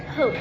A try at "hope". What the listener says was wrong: Is our vowel a long vowel or a short vowel? A short vowel. Are you sure? Because we have a silent E here at the end. It's a long vowel. Hope.